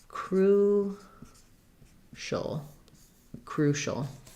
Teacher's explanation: Letter U says oo. The letters CI say the SH sound. And then we have a schwa or just a syllabic L. So it sounds like crucial.